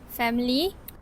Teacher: The schwa is omitted. The participant used the compressed native light form.